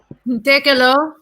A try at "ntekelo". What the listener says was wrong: Yeah, remember this is a long vowel, please.